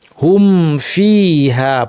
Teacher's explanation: কারণ মিম সাকিন ফায়ের মাখরাজ কাছাকাছি, হুম ফিহা পড়তে হবে, মিমকে স্পষ্ট ফাকে স্পষ্ট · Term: ইজহার